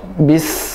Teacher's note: nafasnya ketika sin yang sukun, nafasnya dialirkan.